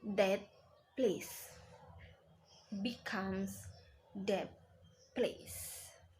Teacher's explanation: it is clear that the th sounds is totally or completely assimilated to the p sounds and becomes identical to the one in the next word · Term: full assimilation